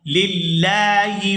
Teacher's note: یہاں لفظ اللہ کے لام کو باریک ادا کریں گے کیونکہ اس سے پہلے زیر ہے